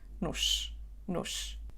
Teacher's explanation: Pronunciamos a letra O como U, nu, e depois disso temos o som sh · a letra O não é acentuada e tem o som reduzido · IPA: /nuʃ/